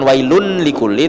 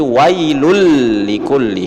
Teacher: Wailul itu wailun ya, tapi dia ketemu dengan huruf lam, maka dia idgham bila gunnah, langsung dimasukkan ke la setelahnya itu. Jadi bukan wailun likulli tetapi wailul likulli.